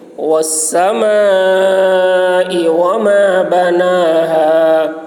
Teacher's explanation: میم میں الف مد ہے، کھینچیں گے